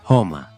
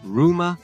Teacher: O R inicial nas palavras é suave em italiano e forte em espanhol.